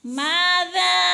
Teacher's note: ذا دال پہ مد ہو رہی ہے کھینچ کر 4-5 حرکات کے برابر